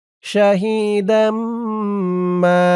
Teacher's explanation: এখানে ঈদগামে বাগুন্না, কারণ তানবিনের পরে ঈদগামে বাগুন্নার ৪ হরফের ১ হরফ মিম আসছে।